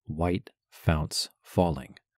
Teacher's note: The first thing I notice is the three stressed beats at the start of line one, white founts falling. There seems to be no more natural stress on any one of those syllables than on the other two.